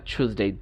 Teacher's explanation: আমরা যখন অ্যাসিমিলেট করি তখন সাধারণত টয়ের পরে ইয়া থাকলে আমরা এখানে ছ উচ্চারণ করতে পারি। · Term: অ্যাসিমিলেশন